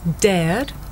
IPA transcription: deəd